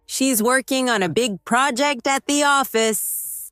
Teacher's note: Stress working, big project, and office.